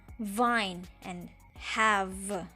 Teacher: these are the sounds that are made with the lower lip against the Upper Front Teeth